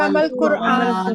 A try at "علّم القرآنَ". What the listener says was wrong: القرآن. علم القرآن. دیکھیں قرآن پر زبر آئے گی جو چیز سکھائی گئی. علم القرآن.